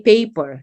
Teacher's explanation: the absence of aspirations of initial voiceless stops